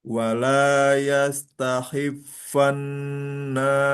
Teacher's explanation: Nun tasdid ditambah gunah.